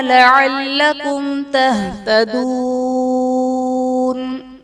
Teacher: میم ساکن کے بعد حرف با اور میم کے علاوہ تا ہے، تو یہاں پر اظہار شفوی کا قاعدہ ہوگا، یعنی میم ساکن میں ہم غنہ نہیں کریں گے · تہتدون واو ساکن سے پہلے پیش ہے، واو مدہ کا قاعدہ، اور حرف مدہ کے بعد عارضی سکون یعنی وقف کی وجہ سے ہم نون کو ساکن کریں گے، تو یہاں پر مد عارض کا قاعدہ ہوگا